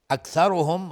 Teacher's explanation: اکثرهم را مفخم هست چون ضمه داره